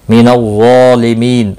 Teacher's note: ظا مستعلیہ ہے، پور پڑا جائے گا، اس کے اوپر کھڑی زبر بھی ہے، ایک الف کے برابر کھینچ کر پڑھیں گے. می یا مدہ ہے، ایک الف کے برابر کھینچ کر پڑھیں گے.